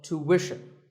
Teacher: it's not ishin, it's wishin. Tuition. You have to put the w sound there.